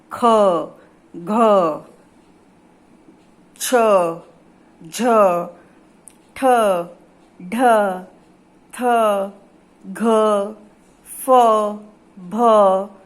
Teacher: जिन व्यंजन वर्णों के उच्चारण में श्वास वायु अधिक मात्रा में बाहर निकलती है उन्हें कहते हैं महाप्राण